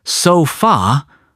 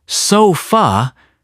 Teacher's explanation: I've heard people say, so fa, with 2 strong syllables, and it just sounds off. And then, Londoners breeze through and say, so fa, as if that second syllable barely exists. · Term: schwa